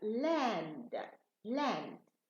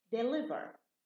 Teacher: if the L is at the beginning of the word or it's between two vowels, then it's light, it's clear